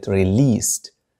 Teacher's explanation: دي في آخر هذه الكلمة تنطق ت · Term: voiceless sound